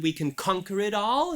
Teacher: conquer is stress on the first syllable